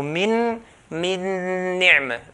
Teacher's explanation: So this nun has merged into the second nun. Because nun is merged into a nun, you're going to notice there's a shadda. · we're pronouncing the nun here with pronouncing the nun with the nasalization sound. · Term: idgham kamil